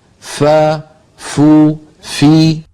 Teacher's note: فا ادا ہوتی ہے کہ اوپر والے سامنے کے دو دانتوں کو نچلے ہونٹ کے تر حصے پر رکھ کر ادا کیا جاتا ہے۔ ہونٹ کے تر حصے کو ہونٹ کا باطن بھی کہتے ہیں۔